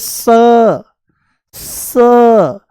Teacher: ये दंत्य सकार है। दांतों से बोला जाता है